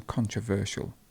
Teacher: The stress is in the middle in this word.